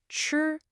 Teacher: It's the first tone, so it's high and flat.